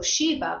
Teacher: in Sanskrit, you would always pronounce that final A